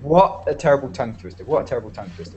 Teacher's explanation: And the what, you don't have to say the T at the end, because that can be quite difficult, yeah, when you speak quite quickly.